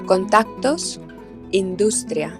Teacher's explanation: la S predorsal, que es mucho más suave y se hace con la lengua un poco más plana